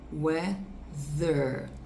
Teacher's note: Você vai jogar o ar para fora, sim, mas a sua corda vocal vai vibrar. Se você colocar a mão na sua corda vocal, você vai perceber que vai vibrar. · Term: voiced